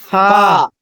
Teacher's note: فا نیچے کا ہونٹ جو ہے اوپر کے دانتوں میں لگے گا